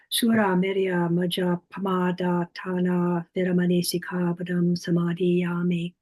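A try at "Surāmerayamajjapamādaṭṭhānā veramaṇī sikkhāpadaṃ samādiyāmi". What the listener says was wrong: You didn't quite pronounce it as a double, but you paused slightly. In fact, I have heard monks chanting, doing it that way, as if somehow they don't quite dare to double it, but equally want to make it a heavy syllable.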